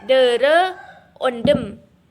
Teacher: huruf D merupakan kontoid plosif apiko-alveolar, bersuara dan tak beraspirasi